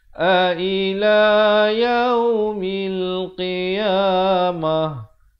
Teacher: ta marbutah bila waqaf ditukarkan kepada ha besar, ha simpul